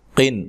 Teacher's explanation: یہاں نون تنوین کا اظہار ہے، غنہ نہیں کریں گے